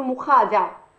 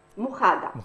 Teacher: العربية التونسية أو بعض اللهجات في تونس تبدل الدال ذا